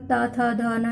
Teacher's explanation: ये दांतों का स्पर्श करते हैं। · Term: ता वर्ग